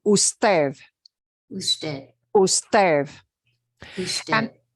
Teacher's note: that D at the end is going to sound more like a TH